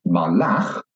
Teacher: then you can hear that the stress is at the end of the word